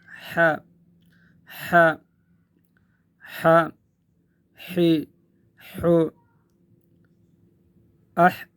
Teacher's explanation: ح، یہ حرف ح یہ حرف ادا ہوتا ہے گلا کے درمیان سے، گلے کے درمیان سے، حلق کے درمیان سے، حلق کے درمیان سے، گلے کے درمیان سے جب ہم اس کو ادا کریں گے تو ایک ہوا کی سی آواز آئے گی۔